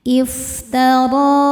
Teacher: Huruf ro dibaca tafkhim karena barisnya fathah. Cara bacanya ro ditebalkan. Iftara. Ro di sini juga ada hukum madnya namanya mad tabi'i muqaddar karena ada ro dengan harokat fathah panjang.